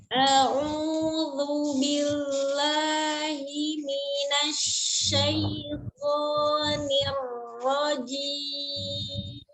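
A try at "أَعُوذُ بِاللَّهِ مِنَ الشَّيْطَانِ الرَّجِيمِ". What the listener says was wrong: Hati-hati di nirnya tidak ngalir. Tidak di akhir, tidak nir, tapi nir langsung nir pendek ya. Rojim, tidak nir, rojim, tidak nir. Nir. Nir. Jangan ya. Kalau misalnya nadanya seperti itu tuh agak ngayun ya. Nir. Itu langsung nir. Rojim.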